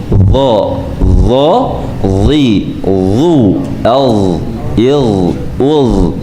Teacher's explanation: udara yang keluar lebih sedikit dan pangkal lidah naik ke a atas ya sudah kesalahan di dalam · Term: huruf yang tebal